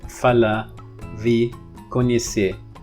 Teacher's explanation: So apparently a lot of speakers drop the R at the end. But even with that exception, if you have a word and then you don't pronounce the R, if that word is followed by a vowel, then it would be tapped or flapped.